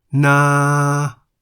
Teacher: Na is in the middle tone because the single syllable in the word na begins with the localist consonant no-nu and ends with the long vowel sara'a.